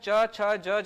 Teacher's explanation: जीभ है वो दांतों के ऊपर तालु वाला हिस्सा है, उसको पूरी तरीके से घेर ले रहा है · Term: तालव्य